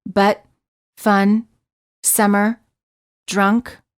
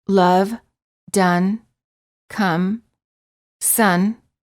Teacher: my accent gets uh as in fun for the uh sound the lips are completely relaxed and just slightly parted the tongue is also very relaxed and in the middle position